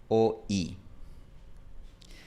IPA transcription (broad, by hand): oj